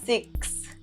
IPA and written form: sɪks (six)